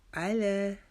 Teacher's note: لا کے اوپر کھڑا زبر ہے، اس کو ایک الف کی مقدار لمبا کریں گے۔ · اس کو آلا نہیں پڑھیں گے۔ آئین کو اوپر جو زبر ہے اس کو جلدی سے پڑھ لیں گے